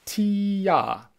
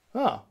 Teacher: my tongue dropped as i went from e to a